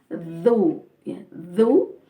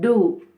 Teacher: Ini dza, lidahnya sedikit dikeluarkan, dzu, ya, dzu, bukan du, bukan a'udu, ya, tapi a'udzu.